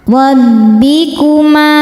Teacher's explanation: Alai rab. Ro dibaca tafkhim karena berharokat di atas yaitu harokat fathah. Maka ro-nya tebal.